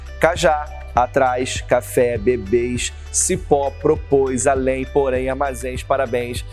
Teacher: é oxítona a sílaba tônica é a última